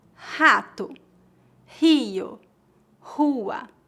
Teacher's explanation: Vamos começar com a consoante R. No começo de palavras, o R é pronunciado como H, mais ou menos como a letra H no inglês.